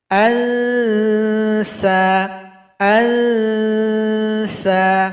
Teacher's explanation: Huruf sin tajam sama dengan zai, ujung lidah juga kepada gigi seri bagian bawah di belakangnya